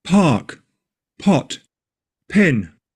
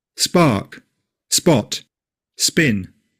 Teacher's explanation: It is normally aspirated, which means there's an audible puff of air when it's released. P. This is very clear before a vowel sound. · It's nearly always aspirated except before s.